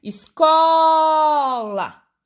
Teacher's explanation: a sílaba que eu falei mais forte, mais demorada, foi o có. Então, quer dizer que o có é a sílaba tônica dessa palavra, tá bom?